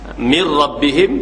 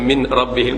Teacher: seolah-olah Nun tu tak ada ra tu bersyaddah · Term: idgham